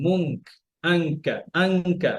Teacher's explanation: এখানে খেয়াল রাখতে হবে, যখন গুণনা করতে তখন যেন কাফের সাথে জিহ্বাটা লেগে যায়, মাখরাজ থেকে যেন হয়।